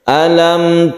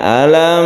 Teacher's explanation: penting selain mim dan ba itu kita sebut dengan izhar syafawi cara membacanya izhar yaitu jelas dan tidak berdengung